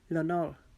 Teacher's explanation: را کو ہم پور کر کے یعنی موٹا کر کے ادا کریں گے کیونکہ را ساکن ہے